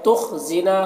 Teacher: خا کو پر پڑھنا ہے، اور نا میں بھی الف مدہ ہے